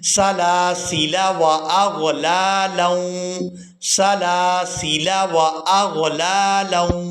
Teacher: اب آپ لوگ یہاں پر لفظ دیکھ رہے ہیں سلاسیلا، آخری جو لام ہے اس کے بعد جو الف ہے اس الف پر گول دائرہ ہے، یعنی اس الف نے الف مدہ والی جو ویلیو ہے وہ کھو دی ہے۔ ہم نے جو آخری لام ہے اس کو بغیر کھینچے ادا کرنا ہے۔